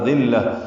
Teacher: ابصارهم اظہار، ترحقهم اظہار. ذلہ، دال کو نرمی سے ادا کریں گے، لام سے ملائیں گے، لام کو باریک پڑھیں گے